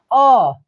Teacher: जब हम अ बोलते हैं तो सीधा कंठ से एकदम सीधा आवाज़ बिना रुके निकल जाती है